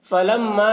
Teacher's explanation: فلما میم مشدد ہے، میم میں غنہ ہوگا